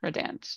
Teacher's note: Syllable stress on the second syllable